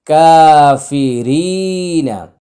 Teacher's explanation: র ইয়াজের রি, নুন জবর না, কাফি রিনা। তো কা হচ্ছে এক আলিফ টান, রি হচ্ছে এক আলিফ টান, নাটা হলো তাড়াতাড়ি